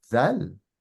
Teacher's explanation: you stick your tongue out between your teeth and then lightly say it.